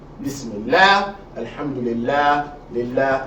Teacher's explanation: if the word Allah is preceded by a kasra, you're going to pronounce the lam lightly, not heavily. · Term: soft lamb